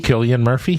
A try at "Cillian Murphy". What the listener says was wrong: Not Killian or Sicilian. Cillian.